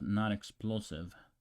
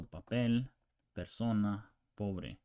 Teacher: English P, but not explosive.